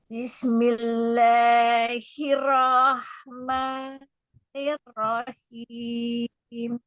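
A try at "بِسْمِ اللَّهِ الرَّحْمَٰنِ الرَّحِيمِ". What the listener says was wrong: Sinnya alirkan lagi. Ya, pas nirnya tipis, rohnya baru tebal.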